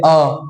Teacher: मध्य स्वर जीभ मध्य में रहता हो जैसे अ अ बोलेंगे एकदम जीव अपनी जगह पर बैठा हुआ